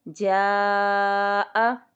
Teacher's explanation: 2 الف 4 کاؤنٹس کے برابر ہم اس کو کھینچیں گے، 2 سے 3 الف کے برابر بھی ہم اس کو کھینچ سکتے ہیں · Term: مد متصل